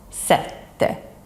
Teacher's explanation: double T, which lasts for longer. You can almost imagine a little pause in between the two T's.